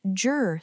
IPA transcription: dʒr